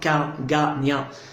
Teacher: Donc là, le dos de la langue touche le palais.